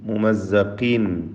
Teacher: മുമസ്സഖീൻ എന്ന് കസ്റോട് കൂടി ഉച്ചരിക്കുമ്പോൾ കുറഞ്ഞ തഫ്ഖീം ഖാഫിന് കൊടുക്കുക. തൻവീനിനെ ഇൽഹാർ ഹൽക്കി നൽകി മണിക്കാതെ വെളിവാക്കണം.